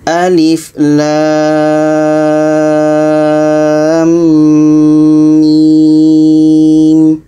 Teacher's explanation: jadi untuk lam dengan mim ini bacanya enam harkat Alif ini pendek saja